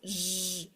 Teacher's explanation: it vibrates in my throat you can also cover your ears Z and it will vibrate